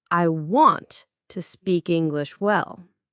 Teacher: the stress is on want and well